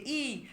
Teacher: ই উচ্চারণ করলেই আমাদের ঠোঁট প্রসারিত হচ্ছে ই এবং জিউহা টু সম্মুখের দিকে এগিয়ে আসার একটা প্রবণতা মানে